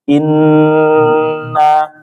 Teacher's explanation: maka tahannya itu paling sempurna inna ya 3 sampai 4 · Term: gunah yang paling sempurna